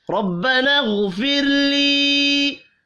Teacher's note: را کو زبر کی وجہ سے پر پڑھیں گے · غین حروف مستعلیہ ہے، غین کو بھی پر پڑھنا ہے